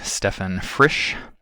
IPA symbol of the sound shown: ɛ